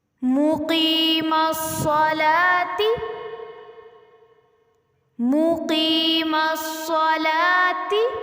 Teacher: لام کے اوپر کھڑی زبر ہے اور کھڑی زبر کو ہم ایک الف کے برابر لمبا کرتے ہیں، اس لیے لا کو ہم لمبا کریں گے۔